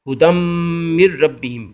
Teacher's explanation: ہدم میم سے مل جائے گا، ایک زبر پڑھا جائے گا اور آگے میم جو ہے وہ اس پہ غنہ ہوگا